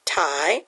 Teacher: at the word tiger see it's divided after the I so our first syllable is an open syllable with the long sound of the I